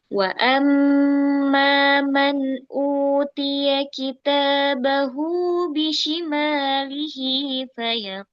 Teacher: wa amma itu tahan dulu mim tasydidnya